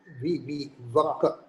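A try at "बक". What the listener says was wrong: It is ba. The stroke inside the circle is not seen in the letter ba. Baka.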